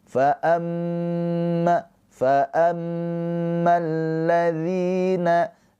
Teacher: mim yang bertasydid ini adalah ghunah musyaddadah. Ditahan dua harakat mimnya